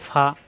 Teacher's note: ফা উচ্চারণ উপরের দাঁতের আগা আর নিচের ঠোঁটের পেটে লাগবে